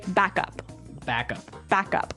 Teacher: so both words are stressed at about the same level